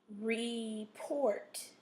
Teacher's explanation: put your accent or your stress in the second syllable